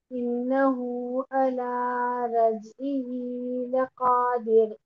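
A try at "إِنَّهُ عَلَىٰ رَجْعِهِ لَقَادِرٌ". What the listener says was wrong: रजईही, रजईही, आइन रजईही। ही नहीं, आई, आइन के बाद नीचे को जाएगी ना, जेर है इसलिए।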